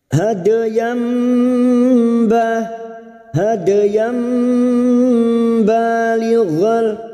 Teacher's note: Nun sukun atau tanwin yang bertemu dengan huruf ba siap membalik atau menukar. Membalik seperti bertemu dengan huruf mim, namun siap membunyikan huruf ba dan mendengung selama 3 harokat. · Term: iqlab